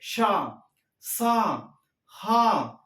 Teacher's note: గాలిని బయటికి ఊదుతూ పలికేటివి మనకు ఊష్మాలు